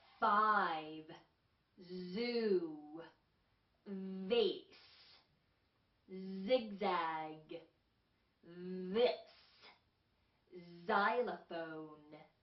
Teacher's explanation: 떨리는 소리들은 just three sounds. V, Z, 그리고 TH, the 할 때처럼요. 주의해야 할 것은 많이 떨려야 된다는 거예요. V도 하고 떨려야 되고 Z도 Z가 아니라 하고 떨려야 되고요.